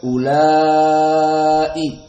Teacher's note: la mat tabi'i bertemu dengan hamzah maka mad wajib muttasil